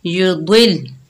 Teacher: द्वाद के नीचे जेर, आगे लाम मुशद्दद है, द्वाद को लाम के साथ मिलाकर पढ़ेंगे और द्वाद जो है रुफ़े मुस्ताला में से है, मोटा पढ़ेंगे